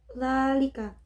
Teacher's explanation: terdapat hukum bacaan mad tabi'i, yaitu dzal berharokat fathah bertemu dengan alif. Cara membacanya adalah dipanjangkan 1 alif atau 2 haraf.